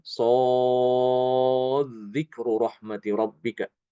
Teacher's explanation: itu kalau diwasolkan dalnya itu diidghamkan ke zal